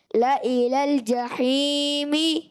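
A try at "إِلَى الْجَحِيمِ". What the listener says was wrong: لإلى الجحیم. زیادہ نہیں, ایک الف کھینچنا. لإلى الجحیم.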